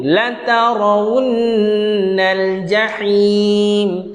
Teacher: Nun bersabdu dengung dua harakat.